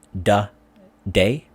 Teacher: And so African Americans, they speak the pronunciations different from other subgroups in America. And especially in the TH sound, the or they, it often is pronounced as a D sound